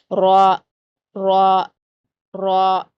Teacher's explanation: گا۔ را را را کا مخرج کیا ہوتا ہے کہ آپ کی جو زبان کی نوک ہے اس کا تھوڑا سا اوپری حصہ اوپر والے 2 دانتوں کے مسوڑوں سے ہی لگے گا